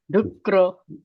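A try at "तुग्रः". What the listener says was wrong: Tugro. No, dugro illa. Tugro.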